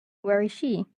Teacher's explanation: WH questions, basically the questions, and usually it have a falling intonation.